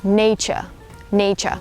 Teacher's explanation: it would be sort of like you drop the R sound. I don't pronounce the R sound.